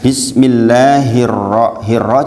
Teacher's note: gampang nggak ada sukunnya Alif lamnya nggak ada sukunya kemudian Bismillahirrahmanirrahim jangan lupa roknya dibaca apa tafkhim tebal kalau tadi kan tipis ini dibaca tebal setiap huruf ro dengan